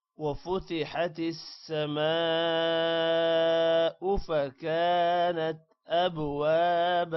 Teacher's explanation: وفتحت السماء میم کے بعد الف ہے. الف پر مد ہے لمبا کریں گے. او کو لمبا نہیں کرنا.